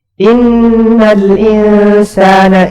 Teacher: Miqdarul gunnati harakatan. Jadi panjangnya gunnah itu 2 harakat. · Takhruju minal khayshum, jelas ya, keluar dari rongga hidung. · inna 2 harakat, nun bertasdid gunnah.